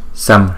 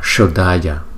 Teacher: chúng ta phát âm chữ 's' mà không uốn lưỡi. Còn đối với âm 's' uốn cong này, chúng ta phát âm là 'sh'. Chúng ta phải phân biệt chúng một cách rõ ràng.